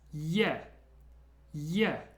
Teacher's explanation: It's almost like an e but there's a little secret y just before it